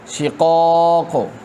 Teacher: قاف ساکن ہو گیا نا، قلقلہ کریں گے،